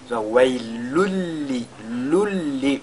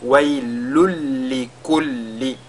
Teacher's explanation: quand on lit, le son un, n'est-ce pas, n'est plus perceptible. On ne l'entend plus. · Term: idgham bila ghunna